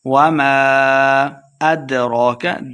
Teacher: دال حروف قلقلہ سے ہے، ساکن ہے تو اسے خوب واضح کر کے پڑھنا ہے